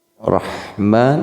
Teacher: ra-nya dibacanya tipis saja tarkik